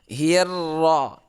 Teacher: Hir. Nah, ini hi-nya agak tipis tapi ra-nya tebal